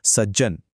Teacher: त नंतर ज आल्यामुळे त चा सुद्धा ज झाला